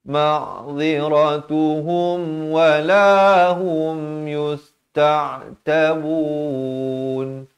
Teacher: Ra bari atas dia baca tebal.